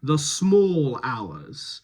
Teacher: A lot more rounding on small. That's the extreme rounding.